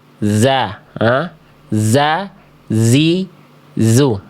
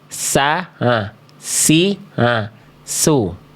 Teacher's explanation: Kalau zai dia tertahan nafas. Kalau sin dia mengalir nafas. Sisanya sama.